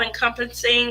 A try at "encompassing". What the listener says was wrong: Encompassing. You keep an extra letter in there. Yeah, not the end.